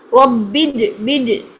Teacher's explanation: قلقلہ کرنا ہے. جیم ساکن کی آواز کو ہلانا ہے. ہم نے قلقلہ یہاں پر جو ہے وہ اس پہ زبر نہیں ڈال دینی.